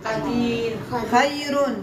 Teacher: الياء الساكنه هي اللي اعطتني ترقيق الراء